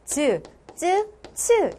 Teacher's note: 센 입천장과 맞닿아 있는 게 바로 혓바닥이지. 자, 센 입천장과 혓바닥이 만나서 츠 이런 소리들이 난다